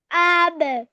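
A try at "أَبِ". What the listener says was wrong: আবে, টান হয়ে যাচ্ছে কেন? হরকতে টানা যাবে না। এই যে মানে একটা ঝুলে টান হয়ে যাচ্ছে, ওই টানটা দেওয়া যাবে না। একটা ঝুলে টান হয়ে যাচ্ছে, ওইটা দেওয়া যাবে না।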